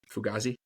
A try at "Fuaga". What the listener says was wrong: mean, you're adding the S in there. getting the S